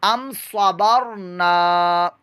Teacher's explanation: را کو پرموٹا کیجیے گا کیونکہ را ساکن سے پہلے زبر یا پیش آ جائے تو پرموٹا ہوتا ہے